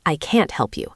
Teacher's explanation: we don't reduce it. We pronounce it fully. I can't help you. The stress is on can't.